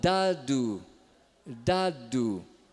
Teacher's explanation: ele está usando um D alveolar sendo que nós usamos um D dental · esse ponto alveolar ele é um pouquinho mais para trás do que nos dentes Então esse aqui gente é o d que o inglês usa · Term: d aveolar